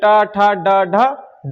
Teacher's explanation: ट, ठ, ड मतलब जीभ का घुमाव होगा और ऊपर ऊपर की ओर टच होगा। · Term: मूर्धन्य व्यंजन